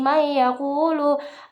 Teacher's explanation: idgham bi gunah yang dibaca dengung ditahan sampai 3 harokat